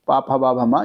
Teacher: और प वर्ग हो जाता है ओष्ठ में। प भ म ये ओष्ठ वाले हो जाते हैं। ओठों के द्वारा बोले जाते हैं।